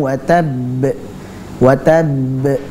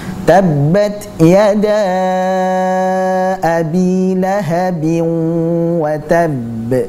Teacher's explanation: Yang sukun langsung memantul, sedangkan yang tasydid itu ada jeda sejenak kemudian baru dipantulkan. Seperti contohnya dalam surat Al-Lahab, tabbat yada abi lahabin wa tabb, wa tabb, ditahan sejenak, wa tabb, baru kemudian dipantulkan. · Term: qalqalah